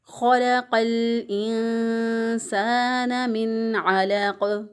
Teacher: लाम बारीक अदा होगा और क़ाफ पे कलकला होगा और क़ाफ मोटा अदा होगा